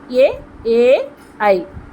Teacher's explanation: కంఠము నుంచి దవడల సహాయంతో పలుకబడే అక్షరాలు. తాళవ్యాలు అంటే దవడ. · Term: కంఠతాళవ్యాలు